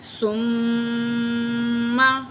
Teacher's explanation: میم میں غنہ کریں گے کیونکہ میم کے اوپر تشدید ہو تو اس میم میں ہمیشہ غنہ ہوتا ہے